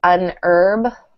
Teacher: in American accents the H in herb is silent um so we usually say un herb but in British accents